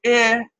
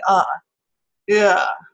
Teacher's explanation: depends a lot about dialect is a centering diff thong where the tongue is moving from sort of those outer boundaries of the vowel quadrilateral to the middle of the quadrilateral